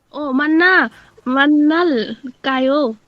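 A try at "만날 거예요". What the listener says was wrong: সুন্দর, মান্নাল কায়ো।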